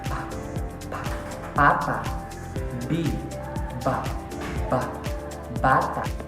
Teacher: ang ibabang labi ay dumidikit sa labing itaas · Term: panlabi